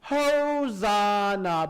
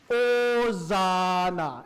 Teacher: Now, for everybody that sings Hosanna, you have to make sure that we don't sing Hosanna. We hear the diphthong a lot, and try to cut out the H too. So it's not Hosanna, but Hosanna.